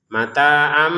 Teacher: Mata 2 harokat, ainnya di sini tanwin sebenarnya, mata'an, an bertemu sama ba, maka dibacanya di sini ada mim kecil, artinya jangan lagi dibaca tanwin mata'an tapi dibacanya mata'am ya, mata'am. Jadi tanwinnya berubah menjadi mim.